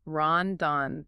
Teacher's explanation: >> But a Japanese speaker hears the rhythm differently because of their writing system. In Japanese script, the N sound at the end of a syllable gets its own character. It counts as a full beat.